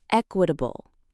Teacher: The stress is at the beginning.